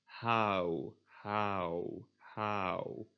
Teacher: You start at a, ha, ha, and then go to oo. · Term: diphthongs